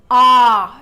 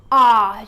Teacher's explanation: it's a very wide, loud, heavy sound. Ah, you open up your mouth very wide and the sound comes out as in ah. Your whole mouth is full of air and you feel the sound.